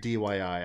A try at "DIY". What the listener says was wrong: DIY. DYI. You said DYI. It's DIY.